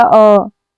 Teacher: मध्य स्वर किसे कहते हैं तो जिन स्वरों के उच्चारण में जीभ का मध्य भाग यानी कि बीच वाला भाग काम करता है उसको मध्य स्वर कहते हैं।